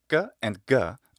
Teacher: the sounds ka and ga are velar consonants meaning they are articulated by contact of the tongue against the velum or soft palate